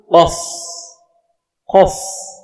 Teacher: Huruf qaf makhrajnya yaitu pangkal lidah dekat dengan anak lidah dan lurus dengan langit-langit yang di atasnya. · Yang pertama, qaf sifatnya yaitu jahar. Jahar itu tidak berdesis. Lawan daripada sifat hamas.